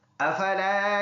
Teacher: فا ان حروف میں سے ہے جو سامنے کے دانت نیچے کے ہونٹ پہ لگے تو اس سے فا ادا ہوگا